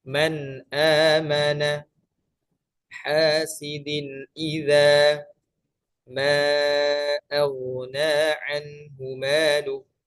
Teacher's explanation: ucapkan nun sukun atau tanwin dengan jelas tanpa menahan lama suara gunnah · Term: izhar